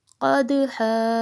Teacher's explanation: قاف کو موٹا، دال پہ قلقلہ اور ہا ساکن